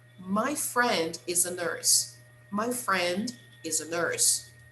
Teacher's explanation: So the strongest words are friend and nurse